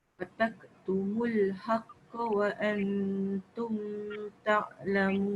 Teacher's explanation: Yang sepatutnya dengung dekat wa an tu.